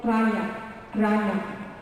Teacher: The Arabic R, the tip of my tongue comes to the end of my mouth and touches the palate. So it makes it, example, ranya, ra at the beginning, okay?